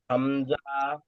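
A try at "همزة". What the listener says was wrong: হামজা টান হবে না, হামজা আর আলিফ টান হয় না।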